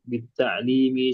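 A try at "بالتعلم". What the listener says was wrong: taklim itu ada ya-nya. Ini tidak ada ya-nya. Di ta'allum. Di ta'allumi.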